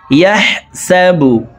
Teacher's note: হা হরফকে হলকের মধ্যখান থেকে উচ্চারণ করব।